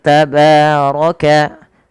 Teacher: Pada lafal tabaraka, ba mad tabi'i fathah bertemu alif kecil pada lafal ba-nya, ro-nya tebal karena dia berharakat fathah